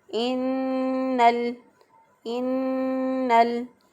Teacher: इन्नल इंसाना, इन्नल नून मुशद्दद है, मुशद्दद हरफ पे एक अलिफ के बराबर गुन्ना होता है। एक अलिफ के बराबर गुन्ना करते हुए नाक में आवाज़ ठहराते हुए हम इसको अदा करेंगे।